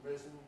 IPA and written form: ˈriːzn̩ (reason)